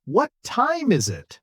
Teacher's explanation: Voice falls on it. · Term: falling intonation